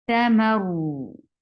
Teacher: I'm not stopping ra abruptly, but I'm giving it a medium flow of sound. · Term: tawassut